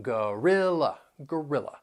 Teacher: that first and third syllable you'll hear that schwas sound and the stress is on the second syllable